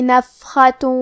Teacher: کلمت نفخہ میں نون پہ پیش ہے، فا کے نیچے زیر ہے اور حرف الخاء پہ زبر ہے، تو ہمیں یہ تینوں حرکات کو برابر سا ادا کرنا ہے. حرف الخاء کی ادائیگی حلق کے اوپر والی حصے سے ہے